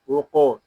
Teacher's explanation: یہاں قاف ساکن ہے، اس میں خوب کلکلا ظاہر کریں گے. اس کو اوق ایسے نہیں پڑھیں گے، اس کو پڑھیں گے وقوف.